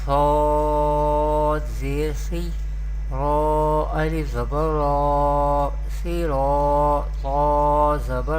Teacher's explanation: sod and ta is belong to mustaliya family, and we pronounce both these letter with heavy voice or thicker voice